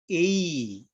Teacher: 그런데 만약에 이 처음과 끝이 바뀌면 이중모음, 처음과 끝과 중간과 끝이 바뀌면 삼중모음 이렇게 한 모음을 발음하면서 영어로 말하면 A 그러면 A로 시작됐지만 끝날 때는 E로 끝나죠. A 이렇게 우리가 이런 걸 이중모음이라고 그래요.